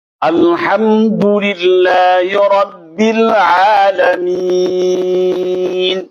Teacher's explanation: Apabila tidak bertemu mim atau tidak bertemu ba, maka mim dibaca izhar, dibaca jelas, bunyi mimnya keluar dari makhrajnya sendiri, tanpa tambahan, tanpa tebelut, tanpa sakta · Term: mim yang idhar